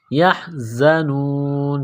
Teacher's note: زا میں سیٹی کی آواز پیدا کرنی ہے، یحزنون، زا کو پڑھتے وقت دانتوں کو ملانا ہے سختی سے، یحزنون۔